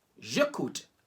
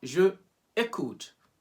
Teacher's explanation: We remove the E from je and just join it with écoute.